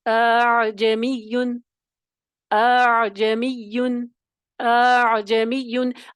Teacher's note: ٹھیک ہے، پہلی والی عین کی تو آپ نے ظاہر کرنا ہے عین کو، اور پہلی والی میں تحقیق ہوگی، دوسرے حمزہ میں تسہیل آ جائے گی، اور یہ ہے تسہیل وجوبی. · حمزہ کو تسہیل کر کے اس میں نرمی کر کے اس کو عین کے ساتھ ملائیں گے. ٹھیک ہے، اس میں نرمی کر کے عین کے ساتھ ملائیں گے، اس میں تحقیق نہیں ہوگی، اعجمیون نہیں ہوگا، یہ والی آواز ہوگی.